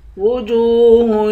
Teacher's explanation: وجوہ، جیم کو واو کے ساتھ ملا کر، واو حروف مدہ ہے، اس کو ایک الف کی مقدار کھینچ کر پڑھیں گے